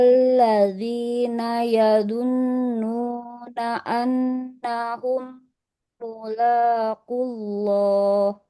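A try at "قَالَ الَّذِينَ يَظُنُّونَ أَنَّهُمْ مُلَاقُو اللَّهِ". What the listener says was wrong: Nah, yang ini nggak boleh ya dunu ya, huruf zo. Nah, enggak ya du, ya zu.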